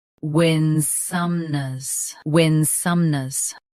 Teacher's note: Both US and UK have the same pronunciation of this word. Stress win. Keep some soft, then nuz light.